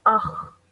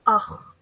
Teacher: So if I were to join these two together, I would do so and I would say akh. And I would put force on the kha because of the shadda.